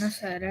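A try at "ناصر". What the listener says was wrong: No, you gotta go longer. Nasara, Nasara. Nasara, If you keep saying Nasara, Nasara, then you didn't make a difference.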